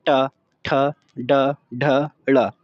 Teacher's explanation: मूर्धा यानी जिसके अंदर जीभ मुड़ करके शब्द को हम बोलते हैं, जैसे मोड़ करके जीभ को, पहले इस तरीके से जीभ को मोड़ेंगे और फिर इस नीचे को उधर को, नीचे जीभ को जब हम पटकेंगे तो उसमें तब उसकी आवाज़ निकलती है, जैसे ट ठ ड ढ ड़, इस तरीके से।